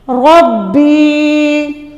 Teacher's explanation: اس زیر کو لمبا کیوں کر رہے ہیں، ہم با کو لمبا کیوں کر رہے ہیں، یا ساکن اس سے پہلے زیر ہے، یہ حروف مدہ بن رہا ہے، اس لیے ہم اس کو لمبا کر کے پڑھ رہے ہیں